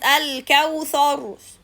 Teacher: Al-kawthar, thar, tha, tha. Like this, you elevate the back part of the tongue when you read Tha, so you make it heavy instead of being light